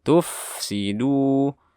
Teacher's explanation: di fa-nya ditahan suaranya karena dia bersifat rokhawah.